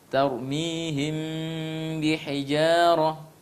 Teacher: Ketika mim sukun bertemu dengan ba, namanya ikhfa syafawi, dibaca dengan dengung.